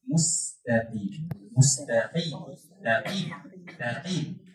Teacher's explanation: Qaf tu baris bawah. Jadi dia punya tebal tu tak tebal macam baris atas. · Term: huruf isti'la